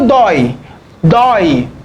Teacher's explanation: monossílabo tônico com ditongo aberto